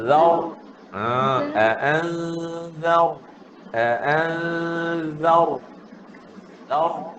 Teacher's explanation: Hujung lidah keluar. Tarik masuk dalam bila sebut ra. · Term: huruf zal